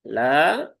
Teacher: ada alif setelah fathah maka ya panjangkan dua harakat